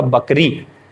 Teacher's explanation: लेकिन अगर हम ब बोलने लगे तो दोनों होठ चिपकेंगे और खुल जाएंगे और ब का उच्चारण होगा बकरी। तो बकरी में ब बोलते समय दोनों होठ एक साथ मिल रहे हैं।